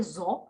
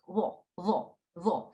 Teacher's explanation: So instead of saying za or that, you say va, va. Some people say zo, like a Z sound, but I make it TH